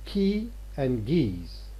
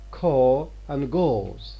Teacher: the allophones occur because of the influence of the following vowel fronted as opposed to retracted · They are fronted because they are followed by E, which is a front vowel, as opposed to K in here, ko, goes.